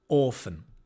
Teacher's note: And the stress on the or.